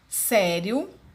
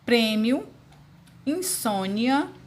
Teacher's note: a vogal é pronunciada mais fortemente já semivogal de modo mais fraco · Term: ditongos orais